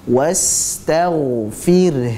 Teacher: h-nya kita tetap lafazkan jangan dihilangkan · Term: huruf ha yang sukun